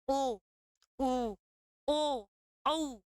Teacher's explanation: होठों का आकार गोल कराते हैं। ठीक है, वे वृत्ताकार होते हैं।